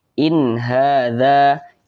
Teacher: Intinya setiap nun sukun berjumpa dengan salah satu daripada 6 huruf di atas tersebut, maka hukumnya adalah izhar halqi. Maka setiap yang namanya izhar itu dibaca jelas, tidak berdengung. Jadi dibaca pendek saja.